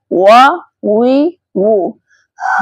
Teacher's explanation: دونوں ہونٹوں کو گول کرنے سے واو ادا ہوتا ہے۔ دیکھیں دونوں ہونٹوں کو گول کریں، دونوں ہونٹوں کے کنارے بس آپس میں ملیں گے، باقی آگے ہونٹوں کی شیپ گولائی میں رکھنی ہے۔